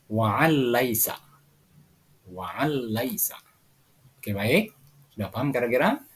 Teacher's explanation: bunyi nun sukun dimasukkan ke dalam suara lam dan tidak boleh dibaca secara mendengung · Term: Idgham bilagunnah